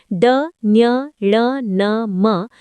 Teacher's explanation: इन व्यंजनों के उच्चारण में वायु मुंह एवं नाक के द्वारा बाहर निकलती है। जिसमें मुंह से वायु निकलने पर अवरोध हो लेकिन नासिकाओं से निकलने की छूट हो नासिक्य व्यंजन कहलाते हैं।